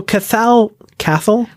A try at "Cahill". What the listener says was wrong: Okay, the T is silent.